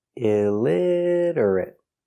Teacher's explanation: Four syllables. Stress on the second syllable.